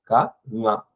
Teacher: கவும் ஞாவும் நாக்கோட அடிப்பகுதி பின் அன்னத்தை ஒற்றும்போது பிறக்கும் · நாக்கோட பின்பகுதி அன்னத்தோட பின்பகுதியில மேல போய் ஒற்ற முயற்சி பண்ணும்